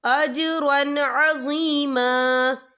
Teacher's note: یہ دیکھیے اجرن، را کے پر تنوین ہے، تنوین کے بعد جو ہے عین آ رہا ہے، اور عین جو ہے حروف ہلکی کا ورڈ ہے تو ہم یہ اظہار کریں گے، ہم اسے بنا غنّے کے پڑھیں گے